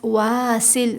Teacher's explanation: واسل، سین میں سیٹی کی آواز آئے گی۔